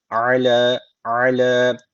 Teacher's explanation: Bu a harfi Türkçedeki a harfi değil arkadaşlar boğazdan çıkması lazım